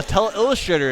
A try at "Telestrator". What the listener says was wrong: The Telestrator. You like to put a lot of emphasis on the Illustrator portion. No, keep saying it like you do. It's like how you say multi-ball.